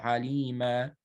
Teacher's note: You substitute the fatha tanween with an alif, right? 2 vowel counts long. And this only happens when you stop on it. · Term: substitute med